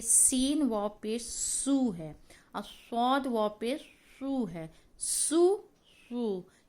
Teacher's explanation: واو تو راؤنڈ ہم پڑھیں گے، اس کے بعد صاد کو بھی ہم تھوڑا اور راؤنڈ کر دیں گے، یہ ہو جائے گا سو شو سو غو۔